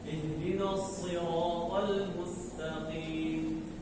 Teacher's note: huruf sad itu memiliki sifat yaitu tafkhim, ya, hurufnya tebal